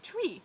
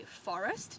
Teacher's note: the r in tree is in the consonant cluster at the beginning of the syllable and so Australians do say tree